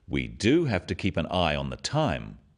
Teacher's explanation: Notice the emphasis on the word do